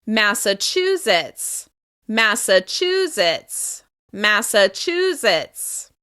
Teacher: We're going to stress the third syllable